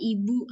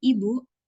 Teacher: Contoh, misal kata ibu hanya sekadar teks atau segmental, namun bila kita menambah nada tinggi menjadi ibu, ini bisa diartikan membentak